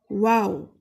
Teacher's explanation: दोनों होंठ गोल होकर हरफे वाव अदा करते हैं